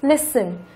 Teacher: Mặc dù nó là động từ, có hai âm tiết, nhưng trọng âm của nó lại rơi vào âm thứ nhất